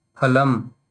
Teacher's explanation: So when you pronounce, only your two lips, Oshtau means two lips, only they should come in picture